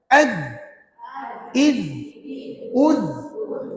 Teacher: hujung lidah keluar sedikit tekan pada gigi gigi kacip atas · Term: huruf Zal